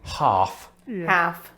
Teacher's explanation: in neither case do we pronounce the l as far as i'm aware